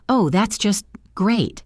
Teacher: Sarcasm is almost entirely communicated through prosody, a flat, slow delivery of words that are usually positive